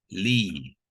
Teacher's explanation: Lam tu dibacakan sepanjang dua harakat. Dia menjadi mad asli.